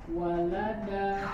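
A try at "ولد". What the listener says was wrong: Wa-nya sempurnakan maju dulu.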